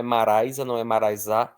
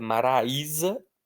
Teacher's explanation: O i está sozinho na sílaba. Ele é a parte forte da palavra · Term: iato